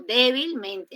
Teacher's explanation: en débilmente hay dos acentos fuertes, pero en todas las palabras que no tengan mente, normalmente llevan solamente una sílaba con tono fuerte, ¿no? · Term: doble acentuación